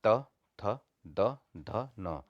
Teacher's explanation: दांतों से उच्चारण का मतलब है कि जीव को दांतों से स्पर्श करके इनका उच्चारण होता है। त बोलते हैं तो दांतों से उच्चारण होता है, थ द ध न। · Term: दंत्य